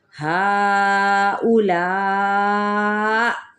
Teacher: हमज़ा साकिन जब कर देंगे तो यहाँ पे झटके की सूरत में वक्फ किया जाएगा